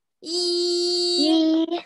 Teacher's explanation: 读一声的时候要高高的、平平的啊！